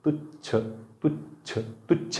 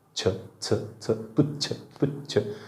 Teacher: पण तुच्छ म्हणा, तुच्छ तुच्छ तुच्छ म्हणताना जिभेचा शेंडा समोर येतो